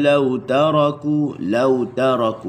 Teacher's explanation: huruf ta. Hujung lidah digusi makhrajnya. Okey. Jangan letak di gigi.